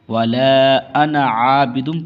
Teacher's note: لفظ انا کو جلدی پڑھا جاتا ہے، عین کو کھینچنا ہے